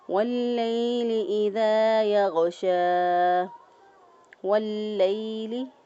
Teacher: پہلے لام کے پر شد، اس کو لام کو مضبوطی اور قوت کے ساتھ ادا کیا۔